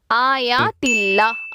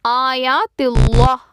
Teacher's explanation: அல்லாஹ் அப்படிங்கிற வார்த்தையில இருக்கக்கூடிய இந்த லாமுக்கு முன்னாடி உள்ள எழுத்து ஜேர் பெற்று வந்திருந்துச்சு அப்படின்னா அந்த வார்த்தையை நம்ம மெல்லினமா உச்சரிக்கணும்